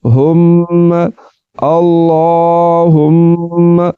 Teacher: اللہم، یہاں پر میم مشدد ہے تو یاد رکھیں میم مشدد ہمیشہ غنّے کے ساتھ ہی پڑھا جاتا ہے۔ تو یہاں پر غنّہ کریں گے، آواز کو ناک میں لے جا کر ایک الف کے برابر کھینچ کر پڑھیں گے